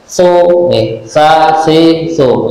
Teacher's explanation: ujung lidah ditempelkan ujung gigi Sanaya Ulya atau ujung gigi seri yang atas